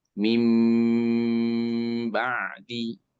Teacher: ketemu ba bunyi n jadi m ditahan tiga ketuk. Contohnya min ba'di menjadi mim.